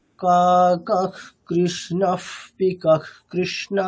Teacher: প্রথমটার ক্ষেত্রে কা কাহা, তারপরে ককার আছে, তাহলে কি হবে? বিসর্গের উচ্চারণটা অর্ধেক খকারের মতো হবে